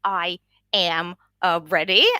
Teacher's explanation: in the phrases where English speakers would contract, like I'm ready. The French speaker will say I am ready, ready, and like say both syllables there.